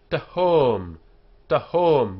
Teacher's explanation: The T here is not aspirated.